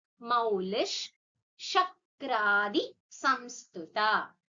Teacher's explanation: So why you're saying that ish is because we have a visarga which is followed by sha which take the ish sound